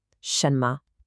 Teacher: That means it's short and light. It kind of falls off the first syllable. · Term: neutral tone